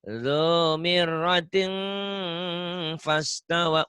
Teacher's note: Jangan ting ya. Ikhfanya ada M-nya.